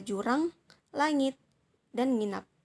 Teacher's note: Lalu ada bunyi eng, di mana bunyi eng ini di lambang fonetis adalah huruf N dengan ekor di bawahnya. Bunyi ini termasuk dalam bunyi dorsovelar, bunyi bernasal, dan bersuara, seperti kata jurang, langit, dan nginap.